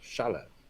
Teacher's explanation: I remember the accents on the first syllable.